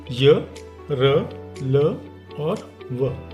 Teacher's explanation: ऐसे व्यंजन जो उच्चारण के समय स्वर यंत्रों को छूते तो नहीं है बल्कि उसके पास से निकलते हैं इनकी संख्या चार है और वो है य र ल और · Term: अंतस्थ व्यंजन